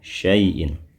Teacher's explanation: maka tanwin in pada kata jibalin bacalah dengan tegas, jelas suara n-nya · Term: Bunyi asal